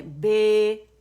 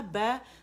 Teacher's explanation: अगर मैं बोलूँ ना बे, तो जब मैंने कहा बै तो ज़बान मेरी फ्लैट थी, बिल्कुल नीचे लोअर जॉ पे लेटी हुई थी